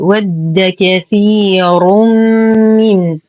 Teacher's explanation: لدينا يا ساكنة ما قبلها مكسور فهو مد طبيعي. الراء مضمومة فهي مفخمة.